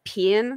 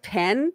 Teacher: in Georgia, people would say like pin instead of pen,